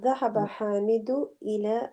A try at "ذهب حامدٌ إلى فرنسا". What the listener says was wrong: Hamidun. There should be tanween on the end of Hamidun. Dhahaba Hamidun.